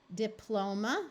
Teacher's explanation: notice the O still keeps the long sound at the end of the syllable